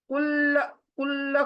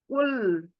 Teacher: कुल कुल करके ऐसे लाम हिलना नहीं चाहिए। कुल यानी लाम एकदम से स्टॉप हो जाना चाहिए। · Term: सिंगल लाम